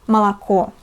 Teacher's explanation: For example, the word молоко has three letters O, but only one of them, the last letter O, is read as O, but the first two letters are pronounced as A, молоко, because they are not stressed.